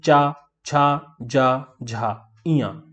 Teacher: तो आप तालु में जब जीभ को टच करेंगे तो चा बोल पाएंगे, नहीं टच करेंगे तो नहीं बोल पाएंगे।